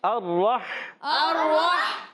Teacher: را کو ہا سے ملانا ہے، ہا حلق کے درمیان والے حصے سے ہا کلیئر کریں گے